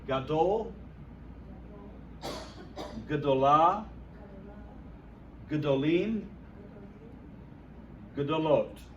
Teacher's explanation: Just like Elohim. You say the first vowel quickly so it just becomes a Shavah. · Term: propretonic reduction